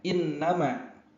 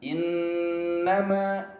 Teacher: jadi nunnya ditahan. Begitu. Sampai suara keluar dari hidung. Ya, itu namanya dengung.